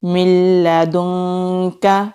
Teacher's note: نون ساکن کے بعد لام آتا ہے تو وہاں پر ہم ادغام کرتے ہیں، ادغام کہتے ہیں ملا کر پڑھنے کو، صرف ادغام کریں گے، غنہ نہیں ہوگا۔